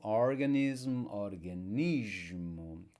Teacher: followed by a consonant that is voiced it's a voiced consonant so we'll get the z sound